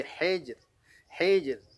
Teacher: Nah, di sini ra-nya dibaca tipis, ya, karena setelah sebelum huruf ra itu ada huruf, ya, jim yang tanda sukun, kemudian sebelum jimnya ada huruf ha yang dibaca kasrah, maka ra-nya dibaca tarqiq atau tipis